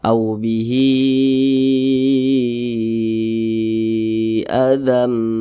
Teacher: bahwasanya Mad ini ee dibaca lebih daripada dua harakat Nah jadi madsilah thawilah ini dibaca 4 hingga 5 harakat panjangnya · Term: mad silah tawilah